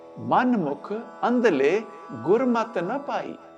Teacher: ਗੁਰਮਤ ਦੇ ਆਖਰੀ ਅੱਖਰ ਤੱਤੇ ਨੂੰ ਸਿਹਾਰੀ ਦਾ ਉਚਾਰਨ ਮੁਕਤੇ ਦੀ ਦੀਰਘ ਧੁਨੀ ਵਾਲਾ ਹੁੰਦਾ ਹੈ